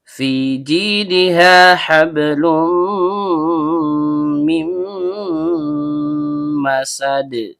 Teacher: Fa huruf bibir yaitu perut bibir bawah bertemu dengan ujung gigi seri atas